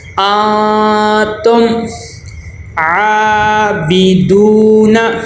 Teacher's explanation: میم کی آواز کو ظاہر کریں گے، بالکل بھی ناک میں نہ جائے، آواز رک جائے · عین کے اوپر کھڑا زبر ہے، اس کو 1 الف کے برابر لمبا کریں گے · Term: اظہار شفوی